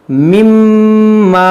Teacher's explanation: میم میم زیر میم، میم الف زبر ما، مما. دیکھیے یہاں پر میم مشدد ہے اور اس میں ہم غنہ کریں گے